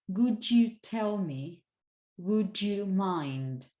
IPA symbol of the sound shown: dʒ